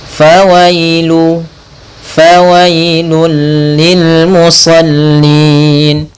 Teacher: Pada lafaz bacaan fawailul, di sini ada huruf ya sukun yang didahului dengan huruf fathah, maka ini kita namakan dengan bacaan lin, bacaan yang lembut.